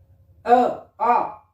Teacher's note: ए आ कंठ से बोले जाते हैं